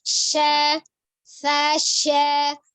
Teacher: Kemudian sya-nya, ya. Tengah lidahnya itu ke langit-langit ya di depannya.